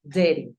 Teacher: Lo que pasa con dirty es un matiz que hace la R también en las vocales